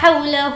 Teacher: ہو کو کھینچیں گے کیونکہ الٹا پیش ہے